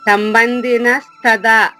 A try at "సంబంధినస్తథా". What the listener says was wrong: తథా పొట్టలో చుక్కుంది కదా, థా అనాలి.